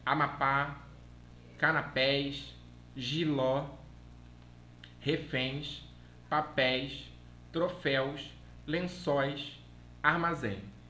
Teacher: É oxítona, a sílaba tônica é no final.